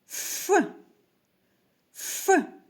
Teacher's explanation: ротик утворює вузку щілинку верхні зуби змикаються з нижньою губою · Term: звук ф